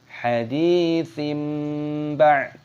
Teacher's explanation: Hadi yaknya sukun dipanjangkan dalnya, haditsim, faknya berharokat kasrah tanwin bertemu dengan ba dibaca iklab. Iklab itu artinya mengganti menjadi huruf mim, makanya di sini ada mim kecil ini.